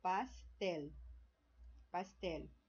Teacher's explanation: é o tel, é a sílaba mais forte, é a última sílaba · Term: aguda